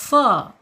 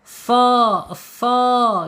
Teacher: Bacanya jangan sodiqin ya, sa, tebal. Karena lidahnya terangkat, pergerakan udara dari dalam agak terhambat karena dia lidahnya terangkat ya, isti'la.